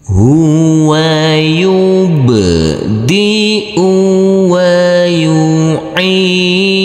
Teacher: Huruf ain di sini harus kita baca panjang dengan panjang 2 harokat karena huruf ain ini huruf ain yang berkasroh i bertemu dengan huruf ya sukun.